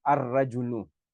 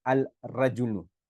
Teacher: we would also make idgham of the alif and lam into the ra. So we would say ar-rajulu instead of saying al-rajulu, okay.